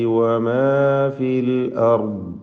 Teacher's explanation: ഉവ എന്ന ചുണ്ട് വൃത്താകൃതിയിലാക്കിക്കൊണ്ട് തന്നെ ഉച്ചരിക്കണം.